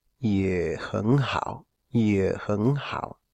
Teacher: se pronuncia como un tercero bajo, es decir, un tercero de 2-1-1